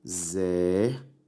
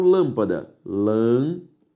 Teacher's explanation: Se eu separo o exército, exército. A sílaba tônica é a antepenúltima, por isso uma palavra proparoxítona. Se eu separo lâmpada, lâmpada, a sílaba tônica é a antepenúltima e por isso lâmpada possui o acento circunflexo.